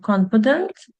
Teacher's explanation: the first adjective, confident, it has 3 syllables. And the word stress is in the first syllable.